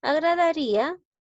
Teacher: observamos que en esta palabra hay dos vocales seguidas, ¿no? La I y la A. Y también me doy cuenta que la I suena más. Automáticamente la estoy tildando por esa razón. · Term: hiato acentual